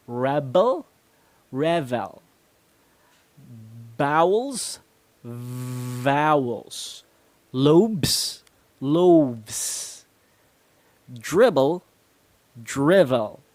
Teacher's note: Now notice that I bite my lip, or I seem to be biting my lip every time I pronounce the V sound, which is a very important thing to remember.